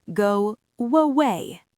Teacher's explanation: Because your lips are rounded, as they open up, they naturally create a W sound. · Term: intrusive sound